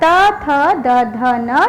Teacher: इसके उच्चारण करते समय हमारी जिह्वा दांतों को स्पर्श करती है, इसीलिए इसका उच्चारण स्थान दांत है।